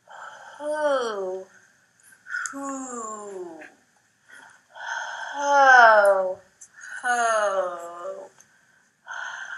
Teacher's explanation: we're really going to hold out this H sound for a long time before we get to the vowel